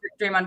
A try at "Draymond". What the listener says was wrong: You say it with a U instead of an O.